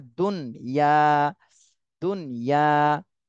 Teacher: পড়া যাবে না দুনিয়া বাংলায় তো আমরা দুনিয়া বলি কিন্তু এখানে নুনে একটু দেরি করতে হবে জজম রয়েছে এজন্য নুনে দেরি করতে হবে